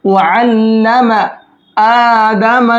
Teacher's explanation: حمزہ کے اوپر کھڑا زبر ہے، ایک الف کے برابر کھینچیں گے۔ آدم ادمل نہیں پڑھنا ہے۔